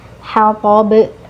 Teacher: Ketika huruf tipis dan huruf tebal berdampingan itu hati-hati. Haknya ditipiskan terlebih dahulu. Nah, kemudian baru to huruf tebal baru ditebalkan ya.